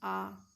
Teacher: जब हम बोलते हैं आ का उच्चारण करते हैं तो हमारा मुंह पूरा खुलता है। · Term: विवृत